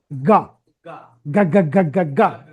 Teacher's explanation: তারপরে সে এ এ লা এ গা বলেন লা এ গা জি এর সাউন্ড হচ্ছে কি গা গা গা গা গা গা ভিতর থেকে গলার মধ্যে জিহ্বাটা আটকে যাবে পিছনে আটকে গিয়ে গা গা গা গা গা গা এটা ভয়েস সাউন্ড গলার ভিতরে ভাইব্রেট হবে